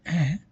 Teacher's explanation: When I say a, which is a low vowel, you did not feel any air pressure when you are producing by keeping your hand in front of your mouth.